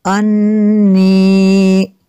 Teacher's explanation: इन्नी वनन्तु, वनन्तु, वनन्तु, नून साकिन है, नून साकिन के बाद ता है हुरूफ़ इख़्फ़ा में से, तो यहाँ पे इख़्फ़ा होगा यानी गुन्ना करेंगे। अन्नी, नून में शद्दद है, यहाँ पे गुन्ना होगा।